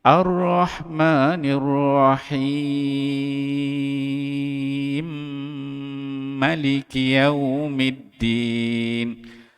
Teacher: Ambil 6 harakat, kemudian naik dengung 2 harakat, kemudian ma tu dipendekkan.